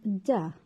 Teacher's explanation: the narrowing is complete the tongue is completely blocking off airflow through the mouth there is also no airflow through the nose voicing is voiced the vocal tracts are vibrating voicing the vocal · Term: oral stop